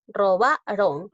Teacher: es una palabra grave porque la mayor fuerza de voz recae en la penúltima sílaba · Robaron lleva la mayor fuerza de voz en la ba. Robaron. Es una palabra grave.